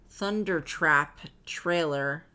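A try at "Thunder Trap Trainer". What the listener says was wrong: I think you said trailer. It's trainer.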